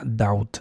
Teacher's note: Aquí la B es muda y la combinación no es O, no es diptongo O, sino es diptongo AU.